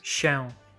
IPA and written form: ɕɛ̃w̃ (się)